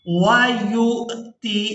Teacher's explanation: یا کو حمزہ ساکن کے ساتھ ملائیں گے تو جھٹکے کے ساتھ ادا کریں گے